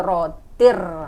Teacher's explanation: idgham bilagunnah yaitu tanwin bertemu dengan huruf Ro Jadi bukan Tin lagi langsung ke rotir